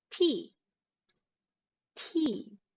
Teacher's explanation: t sound the british accent uses the true t meaning that the t is pronounced by having the tip of your tongue touch your teeth